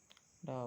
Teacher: ड मूर्धन्य सघोष और अल्पप्राण होता है